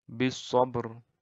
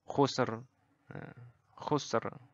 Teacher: R-nya ini tetap dibaca tebal. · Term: ra tafkhim